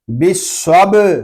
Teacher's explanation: با ساکن ہے، اس میں کلکلہ خوب ظاہر کریں گے